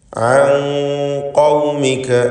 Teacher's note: സാക്കിനത്തായ നൂൻ ഇഖ്ഫാ ഹഖീഖി നൽകി മറച്ചു മണിച്ചുച്ചരിക്കേണ്ടതാണ്. ഖാഫ് എന്ന ഇസ്തിഅലാഇൻ്റെ ഹർഫിന് മുമ്പിലാണ് നൂൻ വന്നിട്ടുള്ളത് എന്നതുകൊണ്ട് ഖാഫിൻ്റെ തഫ്ഖീം സാക്കിനത്തായ നൂനിൻ്റെ ഉച്ചാരണത്തിലും ഉണ്ടാവണം.